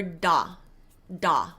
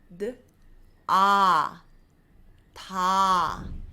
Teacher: in English, we go da, da, and it's a strong D and a very small ah. We want to reverse that in Korean and go d, ah, ta.